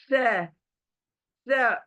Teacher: आपकी जबान थोड़ी बाहर आएगी चौड़ी होकर, और ऊपर के जो दांत हैं हमारे, वो जबान को टच करेंगे, जो अब जोर से टच करेंगे।